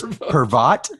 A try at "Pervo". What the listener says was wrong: No, it's silent T. Pervo.